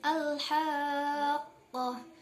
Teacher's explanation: 6 harakat panjangnya, kemudian dia mutsaqal atau berat sebab ada unsur tasydidnya.